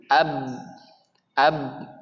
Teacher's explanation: Nah, ab itu maksudnya berhenti, ya. Kemudian sifat khususnya ada namanya qalqalah, makanya kita sering baca ab. Jadi berhenti kemudian dipantul.